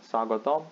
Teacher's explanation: we do not pronounce the last o sound just omits it